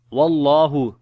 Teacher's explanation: the name of Allah we read in heavy sound because there is fatha on the before letter